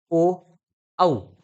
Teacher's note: कंठोषठ म्हणजे कंठ आणि ओठ यांचा वापर त्या ठिकाणी होतो